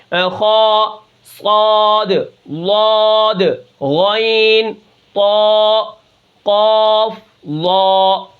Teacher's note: ان حرفوں کو ادا کرتے وقت زبان کی جڑ تالو کی طرف اٹھ جاتی ہے، جس کی وجہ سے یہ حروف موٹے پڑھے جاتے ہیں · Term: حروف مستعلیہ